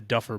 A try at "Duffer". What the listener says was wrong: You kept saying Duff, like Duff beer.